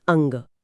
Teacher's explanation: लेकिन जब आप अंग बोलते हैं तो अ के बाद हवा पहले कंठ में रुकती है और फिर सिर्फ नाक से निकलती है। जैसे अंग। अनुस्वार असल में एक तरह का आधा नासित्य व्यंजन है।